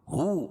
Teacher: ہو الٹا پیش قائم مقام وا مدہ کہ اس کو ایک الف کے برابر کھینچ کے پڑھیں گے